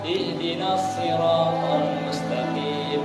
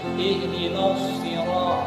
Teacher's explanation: Kalau Imam Hamzah baca shadnya itu ismam, yakni monyong.